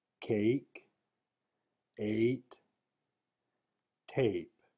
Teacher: A is often transitioned from E to I as heard in cake eight tape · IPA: /e/